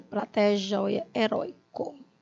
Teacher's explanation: todos os ditongos decrescentes, tá? A vogal tônica mais forte é a primeira